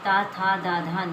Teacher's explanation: तवर्ग जो कि ता था दा धा ना है, ये दंत दंत व्यंजन कहलाते हैं